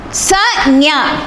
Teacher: இடை அன்னம் இடை நாக்கு